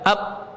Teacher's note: sifat qalqalah yaitu memantulnya suara pada huruf yang sukun